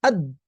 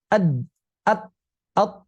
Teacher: Ketika kita ucapkan dal misalnya ad, maka tertutuplah laju udara. Tidak bisa melaju lagi.